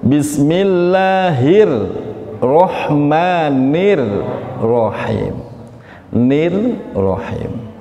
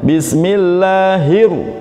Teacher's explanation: Roh yang pertama tipis, yang kedua tebal.